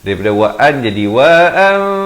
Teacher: Iqlab di sini ditukarkan daripada bunyi nun kepada bunyi mim. Daripada wa'an jadi wa'an 2 harakat.